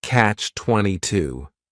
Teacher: The word catch is just 1 syllable, and then 22 is 3 syllables, and the stress is on that final syllable